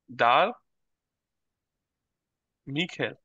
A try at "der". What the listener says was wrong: এটা জিয়া হবে, ডার হবে না।